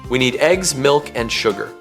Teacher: Fall-rise intonation. The pitch falls and then rises within a phrase. This signals that a thought is incomplete, a contrast is being made, or the speaker is expressing reservation or uncertainty.